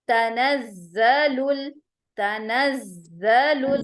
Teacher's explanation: زا کے اوپر شد آ رہا ہے تو اس کو ہم ڈبل ٹائم 2 ٹائم پروناؤنس کریں گے